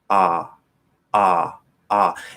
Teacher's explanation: Ah is obviously very much in the back, and so you can easily get the wrong sound if you're not quite tensing it right.